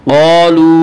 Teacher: क़ालू वाव मद्दा, वाव मद्दा वो वाव जो साकिन उससे पहले पेश हो, वाव मद्दा को एक अलिफ के बराबर खींच कर पढ़ेंगे।